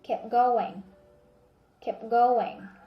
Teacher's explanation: so if you notice we didn't pronounce the t sound